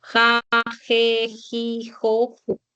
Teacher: Su articulación va a ser en el velo del paladar. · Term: sonidos velares